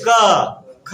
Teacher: जीभ जो होता है ना, जीभ कंठ के पास चले जाता है।